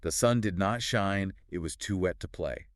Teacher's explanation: That da dum dada dum just pulls the reader along at this really infectious pace · two unstressed syllables followed by a stressed syllable